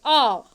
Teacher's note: जिसमें हमारा मुंह पूरा खुलता है, यानी कि पूरा ओपन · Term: विवृत स्वर